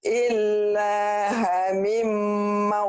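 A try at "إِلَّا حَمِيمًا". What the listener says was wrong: Mi-nya tekan Bu. Hami. Hami. Hami. Panjang.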